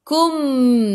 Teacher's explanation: ikhfa hakiki dengan 2 harakat. Bawa ke sisi huruf kaf. · mim ada sukun, jelaskan mim izhar syafawi, tutup mulut